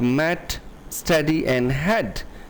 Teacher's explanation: short e words like met steady and head can sound like mutt study